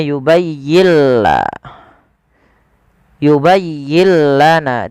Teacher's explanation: Idghamnya adalah nun sukunnya diidghamkan ke huruf lam. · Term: idgham bila gunnah